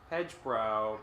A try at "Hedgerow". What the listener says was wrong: Hedgerow. No B.